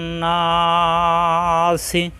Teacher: আমরা জানি নুনে মিমে তাজদি গুন্না করা ওয়াজিব তাহলে আগে গুন্না করতে হবে তারপর এক আলিফ টানতে হবে